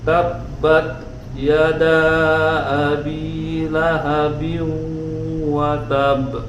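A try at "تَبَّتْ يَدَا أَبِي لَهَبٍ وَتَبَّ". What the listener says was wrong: Nah, tinggal dilatih kol-kolahnya Kak. Ditahan dulu. Wa tab. Jadi jangan langsung kalau kayak itu jangan langsung matul. Ini nempel dikit. Nah, wa tab. Nanti soalnya akan ketemu ya ketika kita baca Quran, ada huruf-huruf qalqalah bertasydid ketika itu diwaqaf. Jadi cara bacanya gitu, sebelum dipantulkan ditahan dulu. Wa tab ya.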